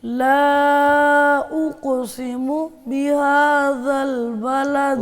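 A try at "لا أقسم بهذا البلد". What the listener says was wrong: اقسم پہ آپ روک رہے ہیں نا, رکنا نہیں, آواز بھی نہیں روکنی.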